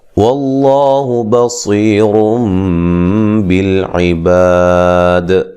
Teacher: وقفاً بڑی مد کے ساتھ وقف کریں گے, کر سکتے ہیں, اور اسی طرح دال پہ قلقلہ کریں گے, ٹھیک ہے, واضح. وقفاً جب وقف کریں گے دال پہ واضح قلقلہ ہونا چاہیے